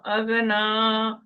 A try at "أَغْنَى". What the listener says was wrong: अब ना नहीं है। أغنى أغنى